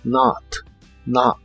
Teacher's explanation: la o de not se pronuncia como una a profunda